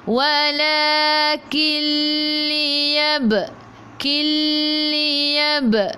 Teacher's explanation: ba qalqalah surah, kena melantun, lantunannya kecil. · nun tak ada sukun bertemu dengan lam, idgham bila gunnah, masuk tanpa dengung